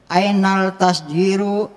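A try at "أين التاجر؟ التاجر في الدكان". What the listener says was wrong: Ainat tajiru. Al-tajiru apa at-tajiru? At-tajiru juga asyam siyah.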